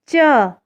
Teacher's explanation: जब हम च, छ बोल रहे हैं तो हमारी जीभ हमारी तालू को छू रही है।